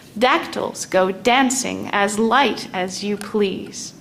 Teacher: the dactyl goes strong, weak, weak, strong, weak, weak.